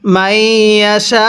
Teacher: এই সিনের মধ্যে চার আলিফ টেনে পড়ব